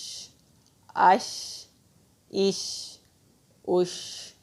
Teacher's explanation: شین بھی حروف ہمس میں سے ہے، اس میں بھی ہماری سانس جاری رہے گی